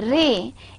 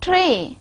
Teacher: The ra in a ray is voiced and non-fricative. And while the ra sound in tray is voiceless and fricative.